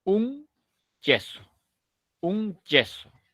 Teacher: en la posición de la n se ha cerrado el conducto